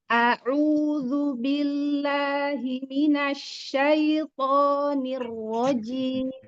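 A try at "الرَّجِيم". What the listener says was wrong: Jim, jangan ada sepanari bibir kasroh, anak kasroh ya. Kasrohnya jangan ada apa? Bibirnya jangan tarik ke belakang, sudutnya. Nirrojim, jim, tapi turun ke bawah saja. Tahannya turun ke bawah dengan menaikkan tengah lidah. Jim, bukan jim. Beda jim. Kasroh. Jim. Ya, jangan tekan, santai saja, lebih rileks.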